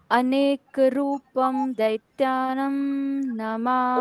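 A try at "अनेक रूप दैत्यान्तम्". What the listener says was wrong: रूपम नहीं है, रूप, प का उच्चारण सिर्फ पूर्ण करना है।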